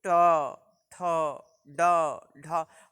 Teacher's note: हमारी जीवा आगे जाती है, थोड़ा सा मुड़ती है और स्पर्श करती है। जहाँ यह मुड़ती है और जहाँ हमारी जीवा स्पर्श करती है उसको जो है वह मूर्धा कहा जाता है।